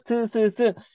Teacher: 그다음에 우리가 시옷 같은 경우에는 우리가 시옷을 발음할 때 윗니와 아랫니 사이가 스스스 이렇게 좁아지면서 소리가 나오잖아요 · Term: 이소리